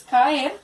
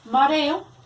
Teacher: son dos vocales abiertas, se está cumpliendo y se están viendo en diferentes sílabas. Mareo, también, dos vocales abiertas, separadas, es decir, que pueden ser un hiato.